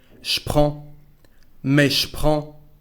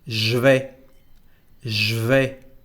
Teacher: And now, we've got here a first contraction between je and prends, and we say je prends. Again, the sound sh to replace je.